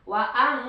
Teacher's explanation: Kalau ang itu ikhfa ya, nun mati menghadapi ta. Wa ang ditahan ya, jangan terburu-buru.